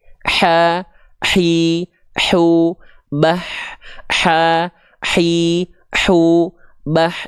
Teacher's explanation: dari bagian tengah tenggorokan kita ya dari bagian tengah tenggorokan kita dia punya karakteristik nafas yang berbisik nih yang ini nih di sini nih ini namanya bagian katup epiglotis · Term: hak kecil